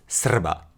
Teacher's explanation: with a rolling R that's so common in Slavic languages that Serbian belongs to